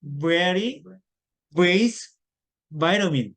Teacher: 순경음이라 그러는데, 그러니까 이제 입술 소리인데 약한 소리죠. 그러면서 윗니로 아랫입술을 지그시 누르고 밖으로 바람을 내는데 성대를 붙여서 내는 소리입니다. 그러니까 푸는 보세요.